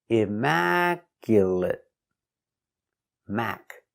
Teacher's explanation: four syllables the stress is on the second syllable Immaculate Mac stress is on Mac